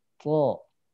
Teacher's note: Huruf po itu tidak ada udara yang ngalir.